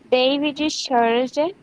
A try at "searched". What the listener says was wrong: Searched. Não, fala assim, ó. Search. Agora coloca o D no final. Searched. Searched. Fala assim, ó. Search. Search. Search.